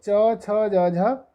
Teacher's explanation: च छ ज झ या और सा, इन वर्णों का उच्चारण स्थान तालु